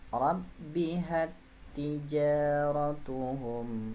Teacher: Di huruf ba, di huruf ta tidak didengung, jadi taknya anggap aja ini nggak ada, langsung loncat ke sini bacanya ya.